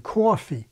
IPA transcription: coəfee